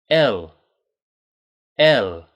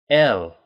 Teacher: that tongue it finishes at the top of your mouth just behind your teeth